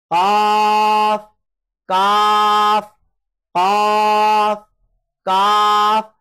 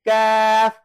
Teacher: हुरूफ मुस्तालिया में से है, इसको आप मोटा पढ़ेंगे